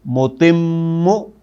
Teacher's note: شد کو جب آپ پڑھیں گے تو پہلا میم سکون والا بھی آپ کو باقاعدہ محسوس ہوگا